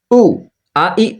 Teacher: গলার শুরু হতে উচ্চারিত হয় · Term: হামজা